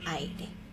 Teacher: You have to trill it a little bit. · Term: the strong R